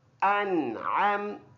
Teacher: ہاں ادھر اخفا نہیں کریں گے کیونکہ نون ساکن کے بعد حروف حلقی میں سے عین آیا ہے تو ناک میں آواز نہیں لے کے جائیں گے. حمزہ نون زبر ان صاف صاف پکڑ کے پڑھیں گے.